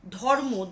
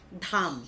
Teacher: ধর্ম, ধযুক্ত অ ছিল সেটা ধযুক্ত আ করে দিলাম, ধাম। অর্থাৎ এই উচ্চারণটাকে আমি দীর্ঘ করে দিলাম। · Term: ক্ষতিপূরণ দীর্ঘীভবন